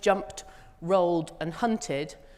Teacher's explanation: jumped ends with a t sound, rolled ends with a d, and hunted ends with an id